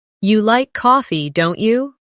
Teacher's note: Now repeat both roles, making your voice rise slightly at the end of the tag question